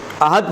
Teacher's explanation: احد پر خاموش ہو جائیں تو احدو نہیں پڑھیں گے، احد پڑھیں گے اور خاموش ہو جائیں گے